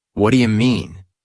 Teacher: In real conversation, it often becomes what do you mean? The do you becomes dia or ja. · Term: connected speech